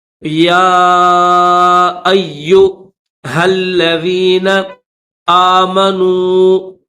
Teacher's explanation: یا کے اوپر کھڑا زبر بھی ہے اور چھوٹی مد بھی ہے، تو اس کو تھوڑا کھینچیں گے، کتنا؟ یعنی 3 الف کی لمٹ میں کھینچیں گے۔